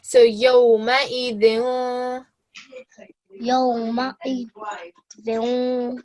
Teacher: So because tu is not, the ta is not part of those 6 letters, we will make sure that we give the dal a nasal sound, so we hide it